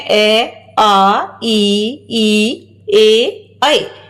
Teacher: इसको उच्चरित करते हैं तो आप खुद अनुभव करेंगे कि जो हमारे होठ हैं वो थोड़े से फैले हुए रहते हैं गोलाई में नहीं होते